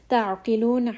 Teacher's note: Ain is going to be from the middle of the throat.